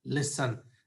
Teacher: in the verb listen, we don't have stress on second syllable, we have stress on the first syllable.